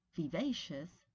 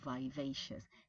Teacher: there's a tendency in American English to use a diphthong in a non-stressed I